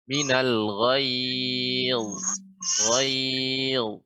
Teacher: Ya, lumayan tapi kurang tebal sedikit ya, kurang tebal lagi karena dha ini dia isti'la, artinya lidah naik ke atas, ya agak melengkung ke atas sehingga suara terkumpul di langit-langit. Minal ghayz.